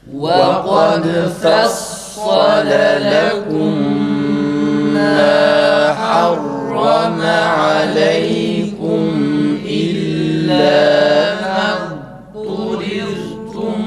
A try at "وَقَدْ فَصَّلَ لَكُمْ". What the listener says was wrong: olmuyor arkadaşlar. İdgam yapıyorsunuz. Dadın belli olması gerekir. Mesela nasıl abettum'daki gibi olur ya da efqalet da'avallaha, bunun gibi, bu gibi örneklerdeki gibi şey olmasın, idgam olmasın. İlla mezdurir, illa mez, dadın tam belli olması gerekir.